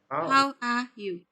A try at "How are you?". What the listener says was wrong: It should go down at the end. How are you? How are you?